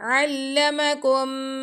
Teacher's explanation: हम इदगाम कर रहे हैं और गुना भी कर रहे हैं अलमकुम इदगाम में शफवी है।